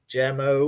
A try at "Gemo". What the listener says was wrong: I think the G is silent. I think it's just emo.